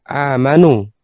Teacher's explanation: jadi hamzah dulu baru mad ya, maka disebut dengan mad badal ya. Madal artinya hamzahnya dibaca panjang ya.